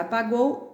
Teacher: Na palavra apagou, há o encontro de duas vogais. Esse encontro vocálico se chama ditongo